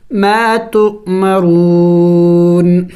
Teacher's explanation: وقف میں نون کو سائلنٹ کر دیں گے